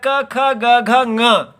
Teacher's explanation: तो स्पष्ट प्रयत्न इनका करण होने से जिहवा का अपने अपने स्थान से कंठ स्थान से पूर्ण स्पर्श होगा